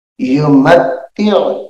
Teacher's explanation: یہ عین ہے گلے سے اس کو ہم نکالیں گے یعنی حلق سے